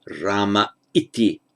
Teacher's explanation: Ah followed by I, simply the visarga drops, so it's Rama iti.